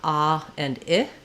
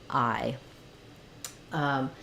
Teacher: my tongue, my mouth starts in the position for ah and ends in the position for I, and it ends up sounding like I. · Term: I diphthong